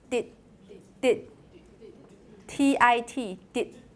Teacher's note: It's a checked syllable. It has consonant at the end of the syllable. That's why they're short.